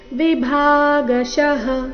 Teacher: ಭಾ ಮಹಾಪ್ರಾಣ ದೀರ್ಘ ಬರಬೇಕು